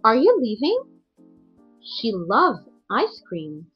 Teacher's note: normal to high to low ending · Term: 2-3-1 intonation pattern